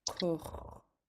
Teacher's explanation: it's pronounced in the back of your throat, and then you're just also rounding your lips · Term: underlined X sound